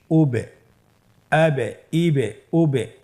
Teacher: এই যে আমরা হরফের শেষের দিকে একটা সাউন্ড করছি এটা একটা প্রতিধ্বনি হচ্ছে একটা ডাবল সাউন্ড হচ্ছে এটাই কলকলা উচ্চারণের সময় একটু ধাক্কা দিয়ে উচ্চারণ করলেই কলকলা হয়ে যাবে ইনশাআল্লাহ